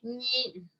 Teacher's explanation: Entonces son sonidos nasales. Primero hay obstrucción, en la cavidad oral hay obstrucción, el aire sale por la nariz